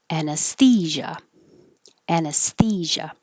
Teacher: you have airflow the entire time throughout this word there's no consonant that stops the airflow and and the zh sound is like shh but with voicing · the zh sound is like shh but with voicing so you might need to take a deeper breath before you